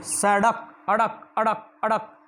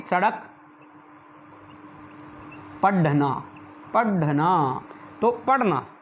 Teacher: जीवा जब इनको बोलते हैं तो जीवा जो है झटके के साथ जो है इनको छोड़ देती है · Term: उत्क्षिप्त व्यंजन